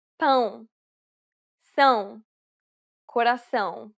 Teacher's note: It is similar to the ow sound in English, but with nasality. Saying the word pound repeatedly may sometimes help with pronouncing this sound.